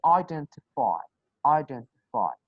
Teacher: D is not coming between 2 consonant sounds. It's a vowel sound before and after, so you will pronounce it.